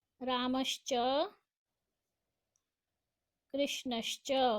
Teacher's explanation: विसर्ग को श हो जाएगा